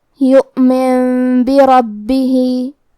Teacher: نون ساکن کو میم میں بدل کے اور غنہ کے ساتھ یہ حکم کو ادا کریں گے. یؤمن بربہ، کلمت بربہ آخری میں ہا کے نیچے کھڑی زیر ہے تو ہمیں مد صلہ صغرا کو ظاہر کرنا ہے. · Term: اقلاب